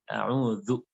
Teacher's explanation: zal itu dibacanya yaitu dengan ujung lidah dijepit